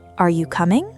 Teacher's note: Rising at the end, inviting a direct yes or no in response. · The second melody, rising intonation, where the pitch climbs steadily and stays high, or keeps climbing right through to the very end of the sentence.